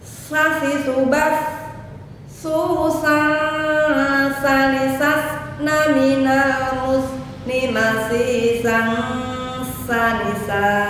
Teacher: Pengucapan sa desisnya hanya sedikit dan banyak udara yang keluar. Nah, maka huruf S-nya, desisnya tidak begitu jelas.